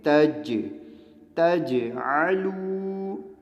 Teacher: یہ دیکھیں جیم یہاں پہ ساکن آیا تو قلقلہ ہو رہا ہے